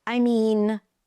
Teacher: I mean pitch is up stays up in the air because something else is coming up